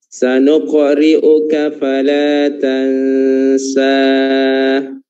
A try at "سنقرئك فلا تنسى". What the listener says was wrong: Dua harokat aja ya. Fala tansa. Huruf-hurufnya tipis.